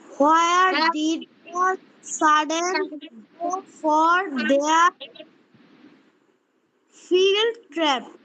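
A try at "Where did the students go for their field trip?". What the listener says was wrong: আচ্ছা, এখানে একটু ভুল হয়েছে, সেটা হচ্ছে where did the students সাডেন না, এটা হচ্ছে students go for their field ট্রিপ। এটা ট্রাপ না, ট্রিপ।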